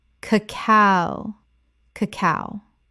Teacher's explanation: The stress is on the second syllable, not the first.